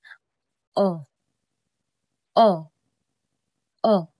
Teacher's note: Ang dila ay nasa likod ng bahagi ng bibig. At ang antas ng dila ay katamtamang pataas at ang labi ay pabilog.